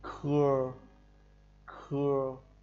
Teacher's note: đọc như chữ khưa nhưng hơi bật hơi